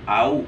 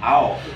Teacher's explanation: Jadi jangan cenderung ke huruf O ya. Tapi cenderung ke huruf U. Jadi wa'au, au bukan ao.